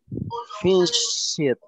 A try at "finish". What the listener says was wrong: You don't have to pronounce the E, remember. T.